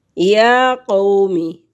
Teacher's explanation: کھڑی زبر ہے یا کے اوپر، ایک حرکت کے برابر اس کو لمبا کریں گے